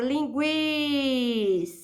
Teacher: a palavra linguiça a sílaba tônica é a penúltima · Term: paroxítona